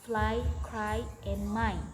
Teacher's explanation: This is a diphthong in B starting with a low front vowel A and gliding towards a high front position E.